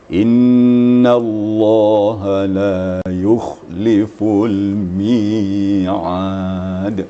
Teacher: Jadi ain itu memang diangkat pangkal lidah sedikit, maka keluarlah isti'la'nya ya.